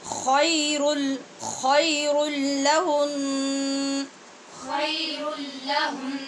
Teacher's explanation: اور ہنّا کا نون مشدد ہے، جب ہم یہاں وقف کریں گے تو غنّے کے ساتھ نون کو ساکن کریں گے. خیر لہن. خير لهن.